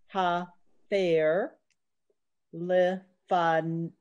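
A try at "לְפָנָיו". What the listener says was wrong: It's a vav at the end.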